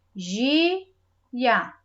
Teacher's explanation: São duas vogais juntas, que na hora de separar a sílaba, mesmo na hora da separação, elas vão ficar juntas. É uma vogal e uma semivogal, uma forte e uma fraca, na mesma palavrinha, na mesma sílaba. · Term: ditongo